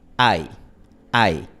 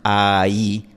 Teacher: Cuando forma parte de un diptongo, se vuelve más corta y es más como una deslizante, como un glide. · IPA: [aj]